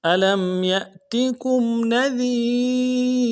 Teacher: لام کو میم ساکن کے ساتھ ملائیں گے, میم ساکن میں غنہ کریں گے. علم یا کو حمزہ کے ساتھ ملانا ہے, حمزہ کو جٹ کے ساتھ ادا کریں گے.